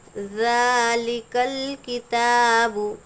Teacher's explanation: ذال کھڑا زبر ذا، ایک الف کے برابر کھینچیں گے۔ ذالک الکتاب، تا پر بھی کھڑا زبر ہے، ایک الف کے برابر کھینچیں گے۔